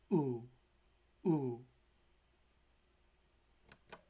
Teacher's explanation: the closed back vowel, represented by the Latin letter U